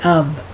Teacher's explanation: the F you pronounce the uh V like for example of a lot of people say of they'll pronounce the F like it were a v